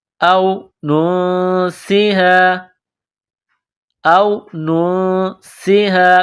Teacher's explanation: نون کے ساتھ ملانا ہے، نون ساکن کے بعد سین ہے، سین میں سیٹی کی آواز پیدا کریں گے ، نون ساکن پر غنہ کریں گے، آواز ناک میں چھپائیں